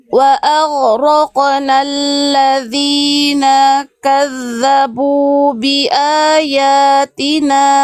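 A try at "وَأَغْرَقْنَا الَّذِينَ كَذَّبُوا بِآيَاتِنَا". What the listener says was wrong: Bagus itu, tapi kenapa nak yang ini dijeda? Jangan jeda, Bunda. Naknya satu harokat langsung masuk kaf.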